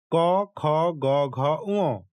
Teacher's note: এগুলো উচ্চারণ করতে গেলে গলার গভীর থেকে এই ধ্বনিগুলো উচ্চারিত হয়, যার পারিভাষিক নাম হচ্ছে কণ্ঠধ্বনি।